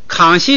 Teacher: 现在这个习呀是一个虚词，轻读轻声，所以那个康呢单独读就读2声